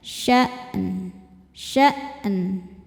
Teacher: Cara bacanya panjang 2 harokat. Fi sya'an, hamzah itu suaranya tertahan, jadi tekan dulu hamzahnya dan bunyi n-nya tetap terbaca ya